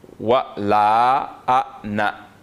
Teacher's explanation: Ici on a comme un soukoun sur l'alif. ça va nous empêcher donc de tirer. On va prononcer ça de manière courte. Donc ce soukoun-là est venu comme pour fermer la syllabe.